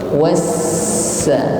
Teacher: Wassa. Diiringi dengan sifat sofir, ada berdesis, ya, tipis, ringan, terasa di ujung lidah · huruf sin bertasydid maka ditekan membacanya